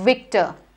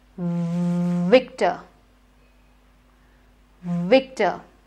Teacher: It is a voiced sound. You should have that vibration.